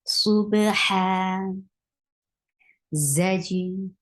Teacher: There should be buzzing sound in za. For fatha, open your jaws, attach with jim.